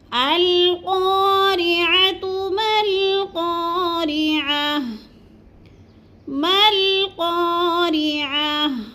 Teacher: میم کو لام کے ساتھ ملا رہے ہیں، درمیان والا الف نہیں پڑھ رہے، کیوں؟ اس لیے کہ اس کے اوپر کوئی حرکت نہیں ہے۔